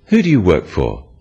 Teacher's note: use a falling tone it sounds friendlier